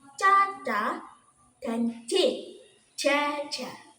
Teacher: Nah, untuk yang terakhir ini ada konsonan paduan, yaitu bunyi yang dihasilkan melalui dua tahap, yaitu hambatan penuh diikuti pelepasan udara secara perlahan